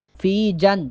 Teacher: جیم کو جب نون کے ساتھ ملائیں گے تو یہاں پر غنہ ہوگا